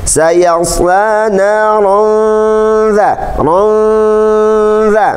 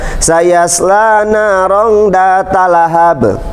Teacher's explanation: Ada kaidah bacaan yang harus ditahan 3 harakat. Namanya ikhfa haqiqi, ya.